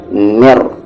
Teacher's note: میم پر تشدید ہے، غنہ ہوگا